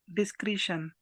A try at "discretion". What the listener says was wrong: Yeah, we pronounce it right. Discretion, you're right.